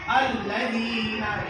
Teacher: بعد یہ حرف مد ہے، الذین، دال کو تھوڑا کھینچیں گے، الذین کی نون کو جلدی پڑھیں گے، اس لیے کہ یہاں پر حرف مد یا کھڑا زبر نہیں ہے